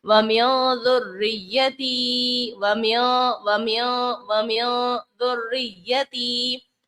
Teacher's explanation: حروف اخفا میں ہم غنہ کرتے ہیں تو یہاں اخفا کا قاعدہ لگایا اور غنہ بھی کیا